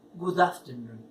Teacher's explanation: Y eso ocurre porque la primera palabra, que en este caso es good, termina en una consonante y suena la consonante. Y la que sigue comienza en vocal. Por eso me oyen decir good afternoon y las pronuncio pegadas.